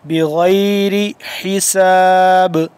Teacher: حساب کے آخر میں با ہو گیا ساکن، تو اس کو ہم کیا کریں گے، قلقلہ کریں گے